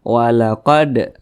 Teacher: perhatikan di samping huruf Dal termasuk kepada huruf Qalqalah Nah jadi apabila dia sukun maka dipantulkan maka huruf Dal ini dipantulkan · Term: Qalqalah Sugra